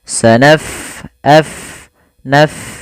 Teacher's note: Pada lafal bacaan sanafrugu, fa-nya kita alirkan nafasnya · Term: huruf fa